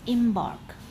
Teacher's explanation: two syllables where stress is given to the second syllable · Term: iambic